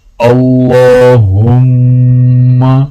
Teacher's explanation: اللہ کے لام کو موٹا پڑھا جائے گا اور جب ہا کو میم کے ساتھ ملائیں گے تو میم پر غنہ کیا جائے گا